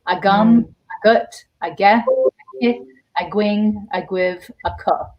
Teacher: the stress is always on the second syllable for sure in Munster